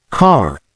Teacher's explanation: the r in words like car is clearly pronounced in Canadian English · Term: Clear R sound